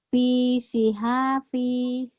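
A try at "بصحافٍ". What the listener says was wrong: B-nya pendek.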